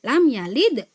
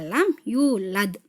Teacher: Yalid ada mantulnya, tetapi kecil saja gitu ya. Nah, yang belakang agak besar, yulad. Ini sebenarnya ada sughra dan kubronya ini ya.